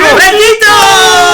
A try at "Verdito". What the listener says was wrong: Verdito. But you gotta roll that R.